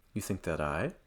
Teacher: There's more information coming, so I would go up.